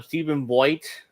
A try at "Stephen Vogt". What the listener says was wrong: It's Stephen Vogt, by the way, not Voigt. thinking of Luke Voigt.